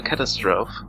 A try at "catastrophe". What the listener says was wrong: You're missing a syllable, by the way. It's catastrophe. Cat ass trophy.